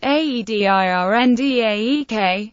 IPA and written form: ædɨˈrɒndæk (Adirondack)